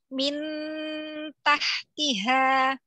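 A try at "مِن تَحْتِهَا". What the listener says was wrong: Bagus, tapi turun lidah. Min tahtiha.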